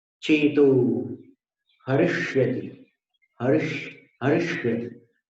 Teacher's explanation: जीव ऊपर जाएगी मूर्धन्य ष